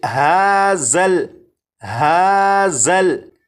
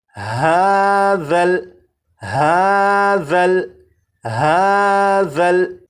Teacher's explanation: ذال کو نرمی سے پڑھیں گے، یعنی سی ٹی کی آواز کے بغیر پڑھیں گے، اور اس حرف کی سی ٹی کی آواز کو ختم کرنے کے لیے زبان کی نوک کو اوپر کے سامنے کے 2 دانتوں کے سرے سے جب لگائیں گے تو ذال کے اندر جو سی ٹی کی آواز ہوتی ہے وہ ختم ہو جائے گی۔